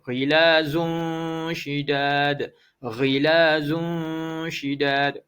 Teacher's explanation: Zun tu tanwin bertemu dengan huruf shin. Jadi ikhfa hakiki. Tolong baca dengan dengung.